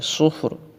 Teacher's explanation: صاد کو پر کر کے پڑھیں گے، اور را حالت وقف میں ساکن ہو جائے گی